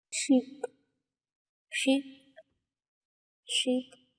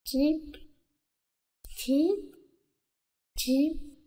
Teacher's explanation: for the fricative you have an affricate substitution